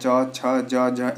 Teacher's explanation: तो जो आपका चवर्ग है उसका उच्चारण स्थान आपका क्या है? तालव्य है।